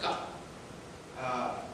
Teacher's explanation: the G sound they make is very guttural, it comes out ga